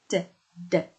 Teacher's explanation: The tongue tip is raised and touch the ridge or slightly in front of it.